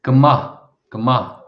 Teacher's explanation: So there's a bit of a H sound on the end there.